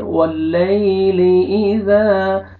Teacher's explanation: زال کو اپنے نرمی سے ادا کرنا ہے تاکہ زا میں مکس نہ ہو، اور الف مدہ، الف سے پہلے زبر، زال کو اپنے 1 سیکنڈ کھینچنا ہے۔ · یا لین ہے، یا جزم سے پہلے زبر ہے، نرمی سے ادا کریں گے